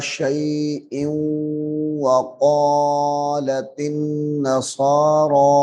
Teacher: یہ حمزہ تنوین جو ہے واو مشدد کے ساتھ ملے گا ۔ شيء وقالت النصارى، یہاں پہ غنہ کرنا ہے۔ وقالت النصارى